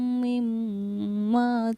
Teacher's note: اس میم پر تشدید ہے تو اس پر غنہ کیا